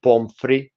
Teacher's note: you don't pronounce the final T